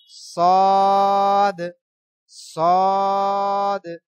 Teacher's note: সদের উচ্চারণ চার আলিফ লাম্বা হবে সদ সদ মোটা আওয়াজ